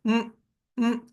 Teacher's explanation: तो यह अनुस्वार है जो नासिक्य ध्वनि है। मुख जब बंद हो जाए और पूरी वायु ध्वनि के साथ नासिका से बाहर आए तो वो मकार का रूप ले लेती है।